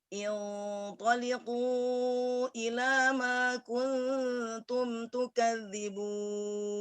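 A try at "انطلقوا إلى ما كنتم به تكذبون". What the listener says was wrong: Kuntum bihi, ada bihinya ya.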